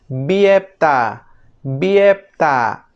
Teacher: La B en fonética se llama con el nombre técnico de oclusiva bilabial sonora.